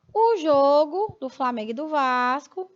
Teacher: a pronúncia, né, do primeiro O do substantivo jogo é fechada